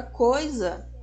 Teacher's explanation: Nós temos na palavra coisa a vogal O, mas é a semivogal I. Novamente o I aqui cumprindo a sua função de semivogal, de um som mais apagado do que o som da vogal O.